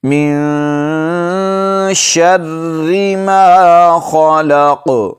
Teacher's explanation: ما خلق، خو کو موٹا پڑھیں گے، یہ حروف مستعلیہ میں سے ہے جو 7 حروف ہمیشہ موٹے پڑھے جاتے ہیں۔ قاف پر وقف کی حالت میں قلقلہ کریں گے